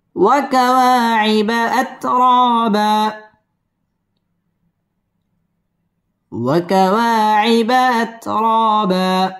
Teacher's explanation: র পুর হবে এবং র মধ্যে তাবাঈ এক আলিফ টেনে পড়তে হবে